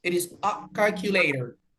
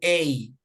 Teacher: Porque en realidad, cuando se utiliza como artículo, mandando el mensaje de una, se pronuncia a, un sonido explosivo, no a del español, sino a, sin aire